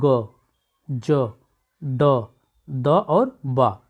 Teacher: तो इसमें सांस क्या रही, कम निकल रही है, इसलिए तीसरा वर्ण भी क्या है, अल्प प्राण है।